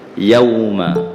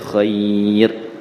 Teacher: Dia bukan panggil mad, dia panggil huruf lin. Huruf lin ni kita baca 1 harkat je, bukan 2 harkat, 1 harkat.